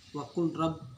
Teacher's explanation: dibaca tanpa menampakkan lam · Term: idgham mutaqarribain